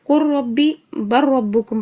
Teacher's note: لام نہیں پڑھیں گے بیچ میں سے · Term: ادغام